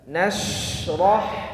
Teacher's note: ciri khas huruf shin itu punya gemuruh suara yang kuat